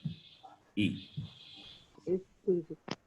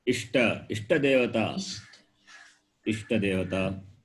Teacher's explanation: Similarly, the letter E, which is a short vowel, it's a short vowel. It is produced from the palate, therefore it is called palatal.